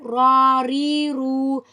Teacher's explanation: را زبر را، را زیر ری، را پیش رو، را ری رو. را ہمارے پاس زبان کی نوک اوپر کے نرم حصے سے جب لگتی ہے تب ادا ہوتی ہے. tip of the tongue touching gums roof just behind the teeth.